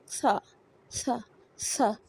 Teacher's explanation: सा सीन होता है, सीन ऐसे नहीं पढ़ना, सीन और सा और हल्की सी हवा की आवाज़ निकलेगी, यानी ज़बान को सामने वाले दांतों के दरमियान में हल्की सी हवा की आवाज़ के साथ निकालेंगे